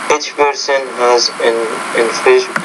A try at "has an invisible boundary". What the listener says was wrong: you want to say has an invisible boundary. You don't have to pause between has and an. You want to group those two words together within that thought group.